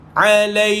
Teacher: matikan kaf, keluarkan sedikit angin pada kaf. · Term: kaf sukun